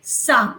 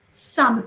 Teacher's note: these are the alveolar fricative sounds